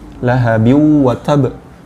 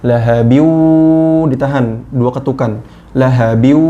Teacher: dileburkan dari yang awalnya tanwin di sini, dileburkan menjadi ke huruf, masuk ke huruf wawu. Lahabiw, ditahan dua ketukan. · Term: idghom bigunnah